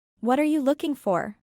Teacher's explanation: Notemos cómo la preposición for, a pesar de ser una palabra funcional, será pronunciada con énfasis. Y esto es debido a que en este caso for está formando un verbo compuesto con el verbo look.